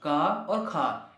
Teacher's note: बिल्कुल कंठ से आवाज आ रही है